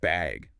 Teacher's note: Or even just bag with a rising tone.